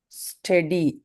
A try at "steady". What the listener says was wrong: very, very good.